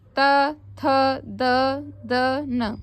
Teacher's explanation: त बोल के देखो, कहाँ आपकी जीभ कहाँ टच हो रही है? दांत से। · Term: तै वर्ग